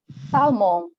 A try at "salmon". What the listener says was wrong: Salmon. Yeah, the L is silent.